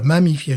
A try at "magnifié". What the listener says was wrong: Pas mammifié. Non, t'as dit mammifié.